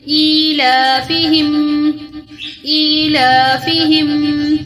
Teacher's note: فا زیر فی، ہا میم زیر ہم، ان دونوں کو لمبا نہیں کرنا